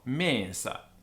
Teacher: the vowel before NS is long